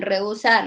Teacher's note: En rehusar lo mismo. Tienes la E, tienes la U, se escucha eso. Y se juntan porque la E es fuerte y la U es débil. No hay forma que se separe.